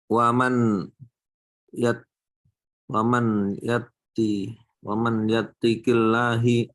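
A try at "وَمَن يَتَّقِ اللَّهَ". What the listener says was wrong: Yattaqi, bukan yatti. Tipis lamnya.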